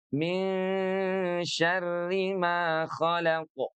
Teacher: Syarri di sini walaupun ada tasydid tapi lihat dia bertanda kasrah sehingga dia dibacanya tipis saja